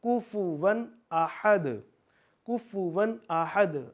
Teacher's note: آپ نے اس کو غنہ لمبا نہیں کرنا، ناک میں زیادہ دیر نہیں لے کے جانا، کیونکہ اخفا میں شامل ہے جو حمزہ ہے یا ہا ہے، اس لیے ہم یہاں پہ کیونکہ حروف اخفا میں یہ چیزیں شامل ہیں اس لیے ہم یہاں پہ ناک میں آواز زیادہ دیر نہیں لے کے جائیں گے، فلو میں پڑھیں گے کفواً احد، کفواً احد۔